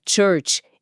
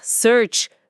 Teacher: Em church, a língua precisa bater firme atrás dos dentes para criar aquele som explosivo do tch. Já em search, o ar desliza suave, como um sopro longo.